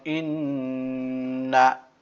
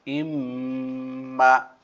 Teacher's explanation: নুনের গুন্না মুখ ফাঁকা, মিমের গুন্না মুখ বন্ধ রেখে উচ্চারণ করতে হবে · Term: গুন্নাহ